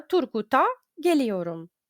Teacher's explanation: Тут буква Т так і залишиться глухою, тому що це ім'я.